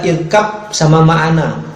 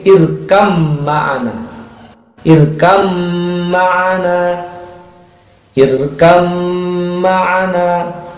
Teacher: Maka huruf ba-nya nggak boleh dipantulkan itu, karena ini masuk ke dalam idgham mutajannisain.